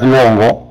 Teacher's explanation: Pronuncias luengo y te encuentras la U con la E. Y la E tiene la mayor fuerza de voz. Entonces en luengo también hay un diptongo creciente o un diptongo ascendente.